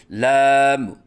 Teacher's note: آواز ناک میں لے کے جانا، جیسے لام، یہ غلط ہے۔ آخر میں میم کے اوپر قلقلہ کرنا، جیسے لام، یہ غلط ہے